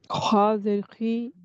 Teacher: حلق کا جو آپ کا گلا ہے اس کا آخری حصہ جو منہ کی جانب ہے اس سے یہ خا ادا ہوتا ہے اور موٹا ہے